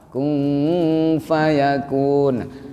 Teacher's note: Kung ini sudah bersiap-siap di makhraj fa